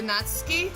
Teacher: there's a lot of dropping of the U in Japanese. It seems to be the vowel that's most commonly reduced